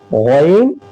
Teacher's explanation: غین، یہ شروع والے حلق سے